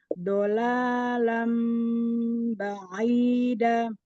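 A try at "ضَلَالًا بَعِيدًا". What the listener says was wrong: Dotnya ke belakang lagi ditekan di tepian belakang. Lidah. Do. Nah, bukan do. Coba digigit lagi lidahnya. Dolala. Lagi tekan yang kuat. Do.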